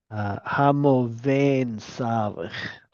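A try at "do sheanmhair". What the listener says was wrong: Doven Savik. Not vain, but then.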